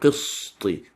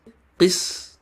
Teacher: Sin is a light letter. It's not heavy. Therefore, the back of your tongue should not be lifted.